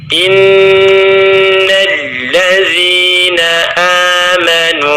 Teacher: kita akan mendengungkan bacaan kurang lebih dengan tempo 3 harakat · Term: nun bertasydid